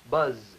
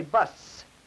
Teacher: That's a voiced sound versus a voiceless sound.